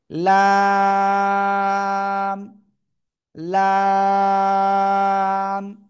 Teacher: লাম। জিহ্বার আগার কিনারা উপরে মাড়ির দাঁতের গোড়ার সাথে লাগাবেন, লাগিয়ে 1 2 3 4 চার আলিফ টেনে পড়তে হবে।